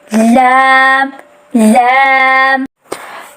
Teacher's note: لام کی ادائیگی زبان کی نوک سے ہوتی ہے۔ زبان کی نوک کو اوپر کے دانتوں کے سامنے والے مسوڑوں کے ساتھ جوڑتے ہوئے لام حرف کی ادائیگی ہوتی ہے۔